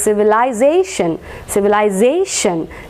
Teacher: the stress will be on the second last or on the pen ultimate syllable